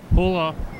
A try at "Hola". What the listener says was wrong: The H is silent. Come on.